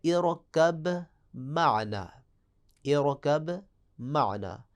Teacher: میم اور با آپ کو معلوم ہے کہ یہ شفتین سے ادا ہوتے ہیں، دونوں ہونٹوں سے ادا ہوتے ہیں ، حروف شفوی ہیں۔ ان کا بھی ایک مورد ہے، سورہ · اس کا ایک مورد ہے با کا میم میں ادغام ہوگا